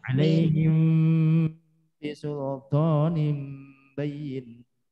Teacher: mim sukun bertemu ba namanya ikhfa syafawi. Maka akhirnya itu bibirnya tidak boleh rapat.